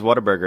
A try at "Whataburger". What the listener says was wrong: Yeah, you're saying it the way people from Philadelphia say water. Whataburger.